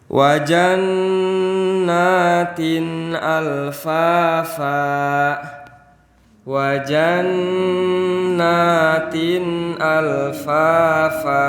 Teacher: Di sini ada huruf nun yang bertasdid. Berarti cara membacanya harus ditahan. Karena nun bertasdid itu masuk ke dalam kategori manatahan.